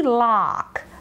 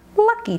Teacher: Lock is the long ah. Luck is the schwa.